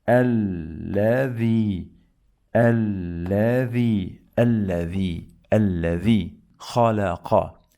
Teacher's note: we pronounce this lam 2 times. The first time is with sukoon and the second time is with fatha. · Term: shadda